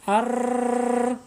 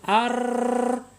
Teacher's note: ro ini mempunyai sifat takrir Apa itu takrir takrir ini bergetar